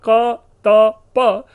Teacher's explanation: क, त, प, जिसे अघोष और अल्प प्राण कहते हैं